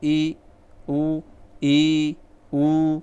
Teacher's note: जब आप ई ऊ का उच्चारण करेंगे तो आपका मुख द्वार है वो पूरी तरह से संकुचित होगा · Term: संवृत